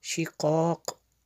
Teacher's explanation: اچھا جیم وقف جائز کی شارٹ فارم ہے، یہاں پہ اگر وقف کریں گے رکیں گے تو فی شقاق ایسے اس کو پڑھیں گے، شقاق، یہ قلقلہ ہوگا آخر پہ